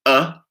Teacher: lastly we have a central vowel known as uh that's called the schwa